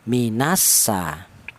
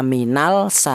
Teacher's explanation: lam matinya dianggap tidak ada, itu cara bacanya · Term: idgham samsiah